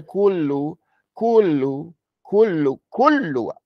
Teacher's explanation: you have to put your tongue up to the makhraj of the lamb hard. Not extra hard, but harder than a sukoon. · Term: shadda